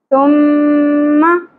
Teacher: میم مشدد پہ گناہ کریں گے اواز کو ناک میں ٹھہرائیں گے · تا کو نرمی سے ادا کریں گے سیٹی کی اواز نہیں انی چاہیے میم مشدد پہ گناہ کریں گے اواز کو ناک میں ٹھہرائیں